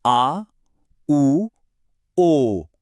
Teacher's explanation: ऐसा लगता है जैसे आवाज और जीभ की हरकत गले में पीछे की तरफ से हो रही हो। जीभ का पिछला हिस्सा ऊपर तालू की तरफ उठ रहा है। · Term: पश्च, पश्च स्वर